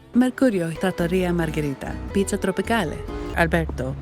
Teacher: she can naturally roll the Rs like we do in Italy